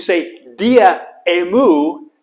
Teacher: So when you say dia emu, there's a hiccup in your voice.